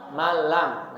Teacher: kalau lam ra tanpa adanya dengung, langsung malam. Jadi bukan dibaca manlam, salah, tapi dibaca malam. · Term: idgham bila gunnah